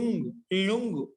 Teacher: ఇప్పుడు లుంగ్ అన్నాం, లుంగులో ఊ ఉందా, ఆ ఊ పైన అర్ధచంద్రాకార బిందు కూడా పెట్టుకోవాలి. లుంగ్ లుంగు అలా పలకాలన్నమాట. అంటే ముక్కు సహాయంతో, నోటి సహాయంతో పలుకుతాం అన్నమాట. కాబట్టి లుంగులో ఉండే ఉకారానికి పైన అర్ధచంద్రాకార బిందు కూడా ఉంది, అందుకే బ్రాకెట్ పెట్టాను, ఊ పైన అర్ధచంద్రాకార బిందు పెట్టాను. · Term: అనునాసిక